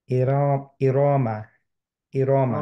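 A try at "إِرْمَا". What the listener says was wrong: রতে স্লাইড টান হয়ে গেছে, হ্যাঁ, রতে হেভি করতে গিয়ে একটু বেশি হয়ে গেছে টানটা।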